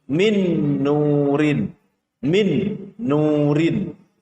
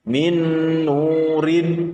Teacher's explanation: Maka huruf nun dimasukkan ke dalam huruf nun berikutnya dengan cara mendengung. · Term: idgham bi ghunnah